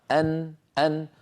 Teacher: لاحظوا بأن الحلق حروفه بعيدة عن مخرج النون. النون أيها الإخوة من طرف اللسان من الأمام، وحروف الحلق من الحلق، والحلق بعيد عن طرف اللسان.